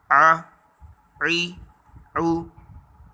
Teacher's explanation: عین حلق کے درمیان سے گلے کے بیچ میں سے